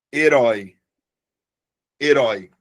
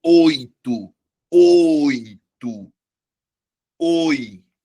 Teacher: Porque é oral e é aberto.